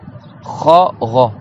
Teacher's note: Le premier c'est un ro, donc le ro c'est le haut de la gorge. En haut de la gorge tu as le kha et le ro.